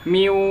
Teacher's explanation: itu kan huruf wau dan ya itu tidak secara alami keluar dari rongga hidung, tapi kita harus mengupayakannya agar dia keluar dari rongga hidung juga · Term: idgham biguna